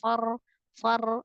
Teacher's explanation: ketika berhadapan dengan ro yang tebal jangan menebalkan Fa di awalnya jadi jangan far tapi langsung far far yang yang tawasut yang